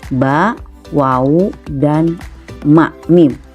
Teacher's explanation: huruf-huruf hijaiah yang keluar dari dua bibir bibir atas dan bibir bawah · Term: asyafatain